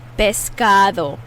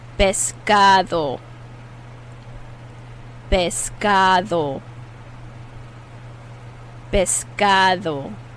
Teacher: that d is a soft d that sounds like a th in english biscado vescado i'm giving you as much listening practice as well